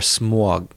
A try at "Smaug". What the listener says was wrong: Smog? Smaug. You got to say the U, right? Smaug. You don't say smog. It's not an O.